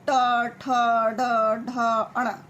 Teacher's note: मूर्धन्य क्या होता है? जो जीभ मतलब ऊपर की साइड लगती है